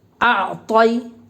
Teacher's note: جیسے عین کے اوپر جزم ہے تو عین کو کیا بولیں گے، عین ساکن، اور جزم والے حرف کا ہمیشہ پیچھے والے حرف سے ملا کر پڑھیں گے۔ یا ساکن سے پہلے زبر ہے، یا لین ہوگی، اس لیے یا لین کو نرم آواز کے ساتھ جلدی سے ادا کریں۔ حروف لین بھی معروف آواز سے پڑھے جاتے ہیں۔